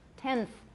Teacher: The N becomes interdental. Tenth, my N is interdental.